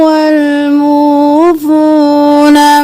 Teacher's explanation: میم پیش واو مو فا پیش واو فو دونوں واو مدہ ہے ایک الف کے برابر کھینچیں گے